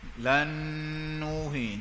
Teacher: Idgham ma'al ghunnah. Tanwin bertemu nun.